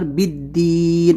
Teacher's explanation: اس کو بالدین مجھول نہیں کرنا ہے، آواز بالکل نیچے جانا ہے، زیر ہے یہاں پر